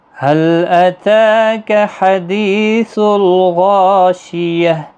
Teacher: تا کو 1 الف کے برابر کھینچنا ہے کھڑی حرکت کی وجہ سے، باقی کسی بھی حرکت والے حرف کو کھینچنا نہیں۔